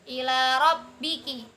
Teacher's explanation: ro-nya fathah, maka dibaca tafhim.